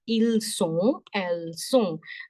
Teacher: The sound of ON is You round your lips, but you make the sound with nose only.